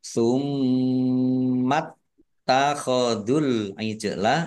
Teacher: taknya dibaca double, ada tasdidnya, ditekan biar tampak doublenya